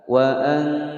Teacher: nun sukun bertemu ta, hukum bacaan ikhfa, disamarkan disertai dengan dengungan selama 2 ketukan. Wa an, suara nunnya masih terdengar. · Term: ikhfa aqrab